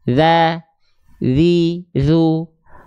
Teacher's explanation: zal itu kalau dia huruf yang tipis, lidahnya rileks.